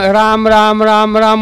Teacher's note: काय इंडिकेट होतं त्यातनं, र हे मूर्धन्य म्हणजे टाळ्याला जीभ जेव्हा लागून स्वर आडवेल त्यावेळेला र येणार. त्यातला आ हा कंठ अंताशी येणार आहे आणि म हा ओष्ठे आहे